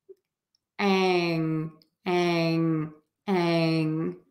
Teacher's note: And an NG sound is sort of that, it's that nasal sound that we make with the tongue tip really low in the mouth, like you would say the G sound, g, g, g, or the K sound, k, k, k. All we're going to do is we're going to shift the air to come out of the nose.